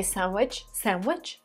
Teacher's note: see that there is d in pronunciation of this word but most of the time i hear it people say sandwich without the d